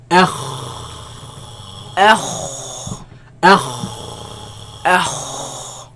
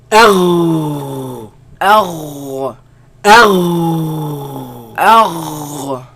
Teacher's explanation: They come from the top part of the throat, right? Where the root of the tongue raises against the uvula and produce a sound.